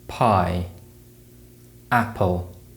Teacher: Moving on to the consonants, we have the P sound, which is produced by blocking and releasing air with the lips